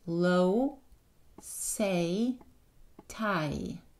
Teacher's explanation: quand je prononce les voyelles en anglais, la forme de ma bouche change. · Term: diphtongue